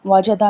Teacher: جیم زبان کے درمیان اور تالو کے درمیان سے ادا ہوتی ہے